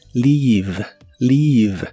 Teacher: Se pronuncia con la I larga o doble y termina con la V o V chica, que en inglés es labiodental y vibrante.